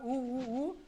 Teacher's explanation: ऊ का जब उच्चारण करेंगे तो आपका ओठ जो है गोल गोल बन जाएगा। तो ओठ जो है जब गोल गोल बन जाएगा, है ना, तो उसको हम लोग बोलेंगे ओष्ठ, ठीक है, ओष्ठ वर्ण बोलेंगे।